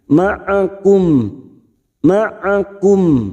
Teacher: Ma'akum ma'akum mim sukun, kita wakaf di sini maka huruf mim sukun, bibir kita tertutup. Jangan sampai tidak terasa huruf mim sukunnya.